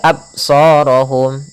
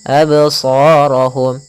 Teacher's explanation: Qalqalah yaitu memantul. Maka jangan dibaca absarahum, harus ada pantulannya. Absarahum. Adapun pantulannya pun jangan sampai terbaca dengan adanya hamzah.